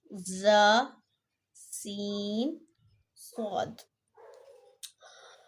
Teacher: حروف صغیریہ کہتے ہیں۔ صغیر کا مطلب ہے سیٹی جیسی آواز، چونکہ ان حروف میں سیٹی جیسی آواز پائی جاتی ہے اس لیے ان حروف کو حروف صغیریہ کہتے ہیں۔